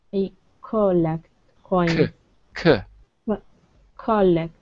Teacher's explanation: Instead of co, imagine there is no vowel. Imagine it's C.